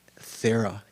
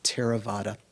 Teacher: that th is just an aspirated t